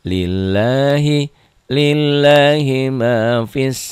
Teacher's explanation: mad tobi'inya tidak dibaca panjang karena bertemu dengan alif lam syamsiyah